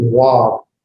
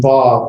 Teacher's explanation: the vav has a W sound, although some people, modern Hebrew uses a V sound, as in vav versus wav.